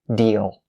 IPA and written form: diːl (deal)